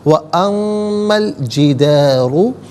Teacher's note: جدارو میں را پر پیش ہے، را کو پر کر کے پڑھا جائے گا